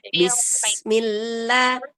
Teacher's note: Nah, jangan kita panjangkan bi-nya ya. Dan bismillah, bismillah, bi-nya jangan dipanjangkan ya.